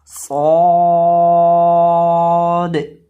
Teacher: सौद को भी हम मुफक्खम पढ़ेंगे क्योंकि ये हरूफे मुस्तालिया में से है